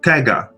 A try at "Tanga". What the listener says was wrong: But yeah, so it's like there's an N in there. So Tanga. It's like a soft G.